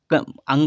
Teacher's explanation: अंगा का उच्चारण कंठ के साथ नाक से होगा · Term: नासिक व्यंजन